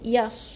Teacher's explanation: Jadi yauma idzi ya tu kena tekan 2 harakat, baru tahan, baru masuk yas. Ya nipis, masuk dengan sod jadi tebal.